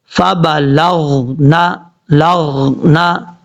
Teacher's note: اب لام کے بعد جو غین ہے یہ حروف مستعلیہ میں سے تو ہے، اس کو پر پڑھا جائے گا، لیکن یہ حروف قلقلہ میں سے نہیں ہے۔ کچھ لوگ پڑھتے ہوئے یہاں پہ غلطی کرتے ہیں، غین کے اندر قلقلہ کر جاتے ہیں۔